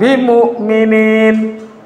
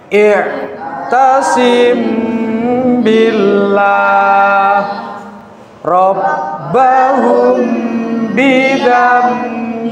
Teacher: suara mim sukun disamarkan. Suara mim sukun disamarkan disertai mendengung. Ada tekanan kira-kira 1 alif atau 2 harokat. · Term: ikhfa syafawi